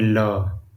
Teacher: हवा जी यहां पर देखिए जिन व्यंजन वण को उच्चारण में हवा जीभ के बगल से ठीक है बगल यानी पास से ठीक बगल से निकल जाए उसे क्या कहते हैं पार्श्विक व्यंजन कहते हैं जैसे में ल